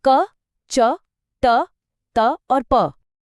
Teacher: अल्पप्राण अघोष। इसको आप एक बेस मोड समझ सकते हैं। मतलब कम सांस और कोई वाइब्रेशन नहीं।